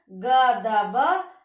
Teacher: घोष अल्प प्राण यानी वर्ण का तीसरा वर्ण ग द ब रहे तो वह अघोष अल्प प्राण में बदल जाता है, यानी क त प में बदल जाता है।